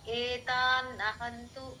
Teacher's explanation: ఏ అంటే వై sound లో రాకూడదండి